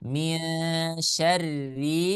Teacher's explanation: Jika huruf ro berharokat kasroh, maka baca saja dengan tarqiq, ya, dibaca dengan tipis